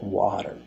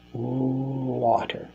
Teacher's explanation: your vocal cords are activating while your lips are still pursed in the W position and and there's a small opening you know between your lips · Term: W sound